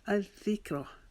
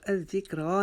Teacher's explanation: ذال کو نرم پڑیں گے اور ذال کے اوپر شد ہے، اس کی وجہ سے ہم یہاں پر رکاوٹ سے اس کو ادا کریں گے۔ الذکر، اس کو الذکرہ نہیں پڑھیں گے، الذکر۔